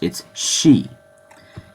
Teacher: It's just that when you make the sound si in Japanese, it comes out shi